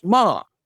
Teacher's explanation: the last tone is ma like and it means scold just it goes down just like scolding